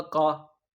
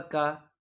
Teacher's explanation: اور آخری جو ہم آواز حروف ہے وہ ہے بڑا قاف اور چھوٹا کاف، یعنی کہ قاف، کاف۔ نقطوں والے قاف کو آپ بھرے منہ سے پڑھیں گے، جو چھوٹا کاف ہے آپ نے اس کو خالی منہ سے پڑھنا ہے، یعنی کہ قاف زبر قا، کاف زبر کا، قا کا، قا کا۔